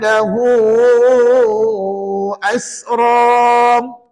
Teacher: pastikan lahu tu baca empat atau lima harakat baru betul kaedah maksilah tawilahnya pada kalimah tersebut ya tapi kena